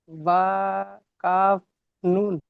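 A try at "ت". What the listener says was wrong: আচ্ছা, এখানে দুটো নোক্তা আছে, এটা বা হবে না অন্য কি হবে বলেন তো, ঠিক করে বলেন।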